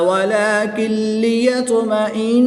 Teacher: نون ساکن کے بعد لام حروف رملون میں سے ہے تو یہاں پر ادغام بلا غنہ ہوگا, بغیر غنہ کے ادغام کریں گے